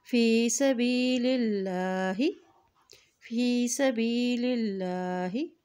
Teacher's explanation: ہم یہاں دیکھیں اللہ کے نام سے پہلے زیر آ گیا ہے تو یہاں پر اللہ کا نام باریک ادا کیا جائے گا